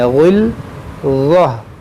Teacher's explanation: ग़ैन भी हुरूफ़ मुश्तालिया है और ज़ा भी हुरूफ़ मुश्तालिया है, दोनों को मोटा पढ़ेंगे